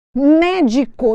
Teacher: a anti penúltima sílaba é a tônica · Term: proparoxítonas